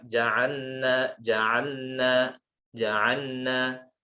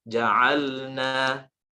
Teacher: Jadi huruf lam dan nun itu berdekatan makhrajnya, sehingga memang rawan terjadi idgham, rawan terjadi memasukkan huruf lam kepada huruf nun